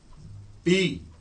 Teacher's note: बी को देखें कैसे हम कहते हैं, लिप्स के ऊपर जोर देते हैं। बी, सांस रोकी, बी के जरिए, लिप्स के जरिए, और फिर निकाले